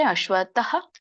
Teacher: ಅಶ್ವತ ಅಲ್ಲಿ ಅಲ್ಪವಾಗಿ ವಿಸರ್ಗ ಉಚ್ಚಾರಣೆ ಮಾಡಿ